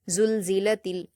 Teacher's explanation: اذا زلزلت زا پر حرکت جلد پڑھیں گے، لام پر جزم ہے، زا کو لام سے ملائیں گے، لام پر جزم ہے تو اس کو قلقلہ نہیں کریں گے کیونکہ یہ حروف قلقلہ میں سے نہیں ہے۔